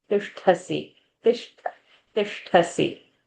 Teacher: t short, sh murdhani, tha mahaprana